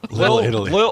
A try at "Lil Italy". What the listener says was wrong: No, it's L-I-L Italy. Lil Italy.